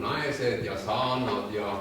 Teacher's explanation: Läänemurre, Läänemaal olete käinud, see on selline tasane lauge ja umbes samasugune on see keel ka. Et seal ei ole väga järske diftonge, i on väga sageli madaldunud